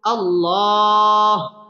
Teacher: আল্লাহর সাথে শব্দের লাম পুর হবে এবং লাম এক আলিফ টেনে পড়তে হবে